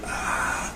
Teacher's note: the vocal folds go into whisper mode, that's into narrowed position rather than going into voiceless mode that is a wide open position , and that accounts for the differences that we can observe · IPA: [ɑ̥]